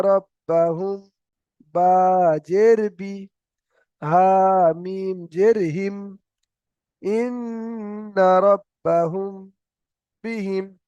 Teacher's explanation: মিম সাকিনের পরে বা আসার কারণে মিম সাকিনটাকে একালিফ গুন্না করে পড়তে হবে।